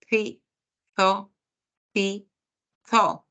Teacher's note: El sonido del interdental en donde la lengua se posiciona entre los dientes para pronunciar sonidos como la Z, ¿sí? La Z antes de la O, antes de la A, E, I, O, U, o la C antes de la E y de la I, ¿no?